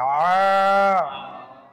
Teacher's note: খারা জবর এক আলিফ টান হবে আ। লাম জবর লা, আলা।